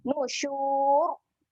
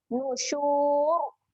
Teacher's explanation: Okey, dekat ra yang hujung ni. Ketika ra hujung ni kita matikan dengan ra yang tebal. Nusyur. Okey, muncung saja.